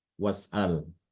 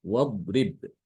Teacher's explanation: maka hamzah wasol ini tidak dibaca ya, hilang.